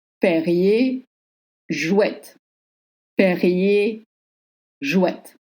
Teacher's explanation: you have to voice the T at the end.